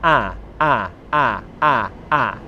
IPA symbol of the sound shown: a